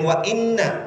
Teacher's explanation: saya contohkan kemudian wa inna Inna ini ada di atasnya tasydid khusus di huruf nun dan mim ketika ada tasydid di atasnya namanya itu dihentak dulu kemudian ditahan